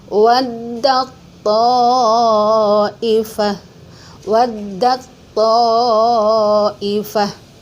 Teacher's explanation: Taknya dilebur ke dalam huruf to.